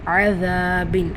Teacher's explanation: நுனி நாக்க வச்சு உரசி உச்சரிக்கணும் இதுல அலிஃப் மதா இருக்கறதுனால இரண்டு ஹரக்கத் அளவு நீட்டம் கொடுக்கணும் பின் தன்வீனை